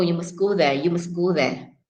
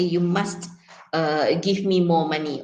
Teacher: in daily situations, normally you don't stress the word must